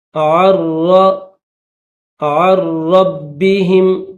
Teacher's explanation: عر نون silent نون نہیں پڑھیں گے